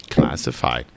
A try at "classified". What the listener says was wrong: Fide. Where's your D? Where's your D?